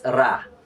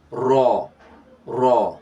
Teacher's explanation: ro is like in a perpetual state of tafkhim. Is in a perpetual state of tafkhim because ro, when ro is pronounced with fatha, it is in the state of tafkhim.